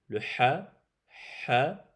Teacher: le ha il sort du milieu de la gorge